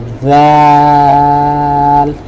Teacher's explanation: আমরা জিহুবাটা উপরের দাঁতের সাথে লাগিয়ে আমরা বলি জাল